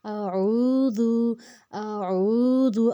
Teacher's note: الف کو ہم نے بالکل بھی نہیں کھینچنا، اس کے اوپر زبر ہے صرف، اور واو اور عین کو ہم نے اس لیے کھینچا ہے، اس کے اوپر جزم ہے واو کے اوپر، اس کے پیچھے پیش ہے، جس کی وجہ سے یہ 2 حرکت لمبا ہو جائے گا۔